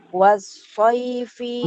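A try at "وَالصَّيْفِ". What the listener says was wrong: Jangan sama Bu dengan yang di atas. Beda ya. Kalau di atas kan pakai shin. Nah, kalau ini pakai sod. Jadi was-saifi.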